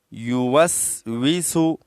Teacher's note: दोनों वाव को होट गोल करने से अदा किए जाते हैं · دونوں واو کو ہونٹ گول کرنے سے ادا کیے جاتے ہیں